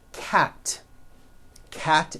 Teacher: Cat ends with an unvoiced t.